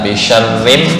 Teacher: Kalau bisyar itu tafkhim, tapi begitu ada ra kasrah menjadi tarkik.